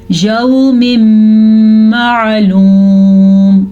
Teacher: نون ساکن یا تنوین کے بعد یا میم واو نون میں سے کوئی حرف آ جائے تو ادغام بالغنہ کا قاعدہ ہوتا ہے. ہم دونوں کو آپس میں ملا بھی دیتے ہیں اور غنے کے ساتھ پڑھتے ہیں